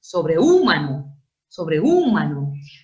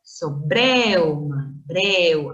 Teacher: Ahí se forma un diptongo. Una abierta E más una cerrada U con acento en la abierta, eso es diptongo.